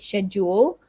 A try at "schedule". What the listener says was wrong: Schedule. So it's a ske instead of a she. a j. Exactly, a j sound. Schedule.